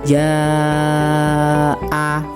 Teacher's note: Nah, itu harus dibaca mad wajib muttasil. Jadi, itu panjangnya tuh 5 harakat ya, 2,5 alif atau 5 harakat. 5 harakat atau lima ketukan.